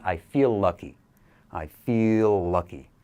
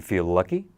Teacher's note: We can make that one letter L sound.